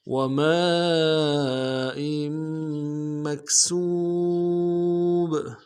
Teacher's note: حمزہ کے نیچے تنوین ہے، تنوین کو آگے میم کے سامنے لائیں گے، غنہ کرتے ہوئے میم کے اوپر تشدید زور دیں گے۔ وماء مکسوب میں کاف کو واو کے سامنے لانا ہے، واو مدہ ایک الف دال میں کھینچیں گے۔